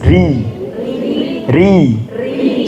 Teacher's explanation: ketika dapat kasrah dia tipis